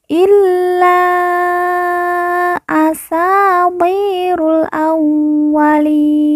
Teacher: Illa asatirul awwalin. Kemudian li kita baca panjang 2, 4 atau 6 harokat